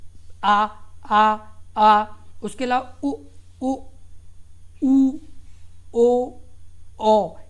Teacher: पश्च स्वर में आपका जीभ का पिछले हिस्से का यानी यूज होता है, और उसे ही पश्च स्वर कहते हैं